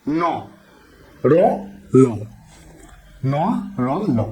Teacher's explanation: একদম দাঁতের গোড়াতে বা মাড়িতে গিয়ে আঘাত করছে এবং শ্বাসবায়ু আটকে দিয়ে ধ্বনি উচ্চারণ করছে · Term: দন্ত মূলধনি